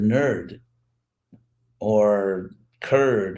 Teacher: it's actually N with a vowel R